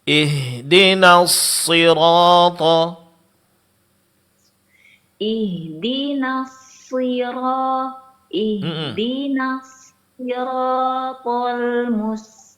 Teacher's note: sifat shafir yaitu suara berdesir pada huruf shad, begitu juga sifat hamas yang mengeluarkan angin.